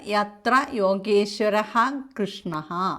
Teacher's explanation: വിസർഗം കഴിഞ്ഞിട്ട് ക വന്നതുകൊണ്ട് അവിടെ ഹ വരും